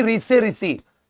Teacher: ऋ से ऋषि इनका उच्चारण मूर्धा से होता है